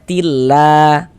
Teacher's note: Jadi [berdehem] kalau ada lafaz Allah sebelum lafaz Allah di sini ada ini ada harakat kasrah ini ya ada tanda baca kasrah ini lafaz Allah sebelumnya ada tanda baca kasrah maka lafaz Allahnya huruf lam jalalahnya itu dibaca tipis dibaca tarkik